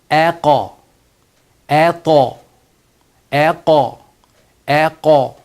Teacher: The rule of thumb is qalqala of the thick letter like qaf, ta. The sound goes towards fatha.